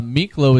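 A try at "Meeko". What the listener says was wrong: Miklo. It's Miko. Miko. There's no L.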